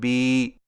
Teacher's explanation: کھڑی زیر کو ہونٹوں کو نیچے کی طرف کھول کر تھوڑا سا کھینچ کر پڑھا جاتا ہے